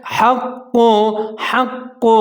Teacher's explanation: ہے اس کو ہا پڑھنا ہے لیکن آگے قاف مشدد ہے قاف کو موٹا پڑھنا ہے قاف کے اوپر پیش ہے حق حق قلقلہ کرنا ہے